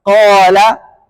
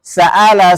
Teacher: Kalau Sebelumnya dia istila maka dia tebal qala kalau sebelumnya huruf istifal maka dia tipis